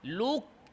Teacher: লামে দম্মা গোল করেছেন পরে কাফ সাকিন ঠোট স্বাভাবিক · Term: ঠোট গোল